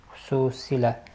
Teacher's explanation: Xüsusilə uzanır. Vurğu i-dədir.